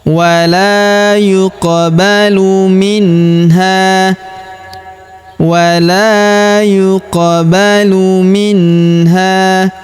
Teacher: Huruf qaf berharokat sukun maka kita pantulkan atau kita qalqalahkan.